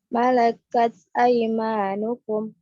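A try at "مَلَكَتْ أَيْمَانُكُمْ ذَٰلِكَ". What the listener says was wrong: Disambung. Enggak, disambung. Kan mim sukun bertemu huruf dzal. Ya aymanukum dzalik, aymanukum dzalik. Dipertahankan suara harful mim.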